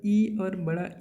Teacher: इ और बड़ा ई जो होता है उसका उच्चारण होता है तालु से